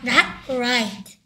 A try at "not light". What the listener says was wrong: 또 right래. not light라니까 right가 아니고요. not light.